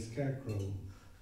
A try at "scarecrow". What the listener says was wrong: Scarecrow. No D. Scared crow. Scared.